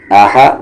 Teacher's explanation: یہ آ bottom throat اور یہ ہا مڈل تھروٹ